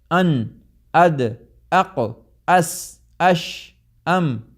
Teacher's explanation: یہ ساری آوازیں جو ہیں یہ مخرج محقق کی آوازیں ہیں، کیونکہ آواز کہیں جا کے ٹک جاتی ہے